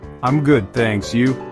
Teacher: Stress is on good and you.